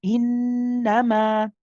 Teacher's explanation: The noon is mushaddad. We know that the noon mushaddad and the mim mushaddad have what we call akmal gunna. It has the longest gunna. And when I talk about the longest gunna, I'm talking about the timing and how long we spend on that gunna.